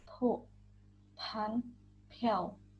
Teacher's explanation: Jadi seperti ada huruf H-nya. Suara bibir atau labial aspirasi. Lafalkan seperti konsonan PH dalam bahasa Indonesia.